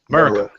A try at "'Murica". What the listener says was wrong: think you pronounced that wrong. You said you emphasize an E when it is actually Murica.